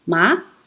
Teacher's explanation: First tone, the flat tone, ma. Second tone, the rising tone